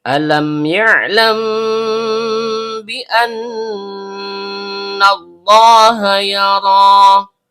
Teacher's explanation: Mim dan ba huruf bibir. Kemudian karena mimnya sukun bertemu dengan huruf ba, maka terjadi hukum bacaan ikhfa syafawi. Dibaca samar disertai dengung. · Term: idhar syafawi